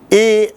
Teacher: ए जब हम ए ऐसे कहते हैं तो हमारा जीभ आधा तालु की ओर जाता है और दबाव कंठ में भी होता है।